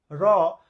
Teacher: তো খেয়াল করে দেখেন আমরা যখন র উচ্চারণ করি র, তখন জিহ্বার আগে একটা মৃদু কম্পন হয়, এই কম্পন থেকে উৎপন্ন হয় বলে রকে বলা হয় কম্পনজাত ধ্বনি